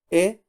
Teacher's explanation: es una E abierta, no es la cerrada, es la abierta